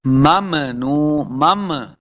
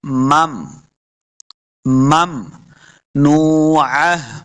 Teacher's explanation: میم کو ساکن کرنا ہے، آواز کو روک لینا ہے